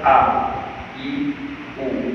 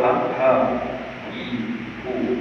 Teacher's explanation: Jadi a Hamzah dia dalam syiddah tekanan suara kuat. Manakala ha di dalam rawah. suara dia lemah.